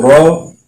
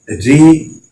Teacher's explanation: اب یہاں پہ یہ میں نے بتایا جب را کے اوپر زبر پیش، کھڑا زبر، دو پیش، دو زبر، الٹا پیش، یہ والے ہوں گے تو را کو ہم نے موٹا پڑھنا ہے، اور را کے نیچے اگر زیر ہوگی تو را کو باریک پڑھنا ہے